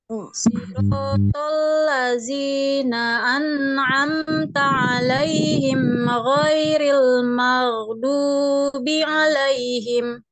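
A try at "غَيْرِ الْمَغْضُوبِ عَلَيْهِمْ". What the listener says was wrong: Maghdubi ke depan ya, ke makhraj huruf dal. Ingat di tepi lidah. Maghdubi, maghdubi.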